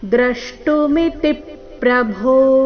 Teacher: ಕೊನೆಗೆ ಭೋ ಮಹಾಪ್ರಾಣ ದೀರ್ಘ · ದ್ರ ಮೇಲೆ ಆಘಾತ ಮಿತಿ ನಲ್ಲಿ ತಿ ಮೇಲೆ ಆಘಾತ